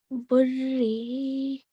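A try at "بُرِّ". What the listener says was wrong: Okay, you don't have to. Okay, you don't have to prolong the sound of the ra. It's just 1 second long, right? Because it's carrying the short stroke of kasra. So it's going to be burri.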